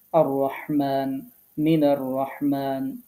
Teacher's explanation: আমরা লামটাকে কিন্তু বাদ দিয়েছি আমরা সাটাকে পড়ছি লামটাকে পড়ছি না মূলত এটি হচ্ছে হরফে শামসিয়া হওয়ার কারণে আমরা আগের লামটাকে বাদ দিচ্ছি